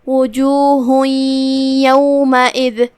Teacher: تو ہم یہ تنوین کو یا میں داخل کر کے غنہ کے ساتھ اور تشدید کے ساتھ یہ حکم کو ادا کریں گے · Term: ادغام بغنہ